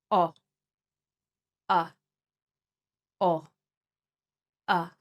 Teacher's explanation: We need to imagine the sound as an unrounded O aperta. The tongue is back.